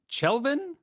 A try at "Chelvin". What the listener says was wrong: I've heard it's pronounced kind of like Kelvin. I feel like it's Kelvin.